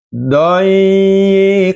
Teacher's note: ada tanwin bertemu dengan ha di sini dibacanya suara nunnya adalah jelas. Karena apabila ada tanwin atau nun mati bertemu dengan huruf idhar, maka suara nunnya harus jelas.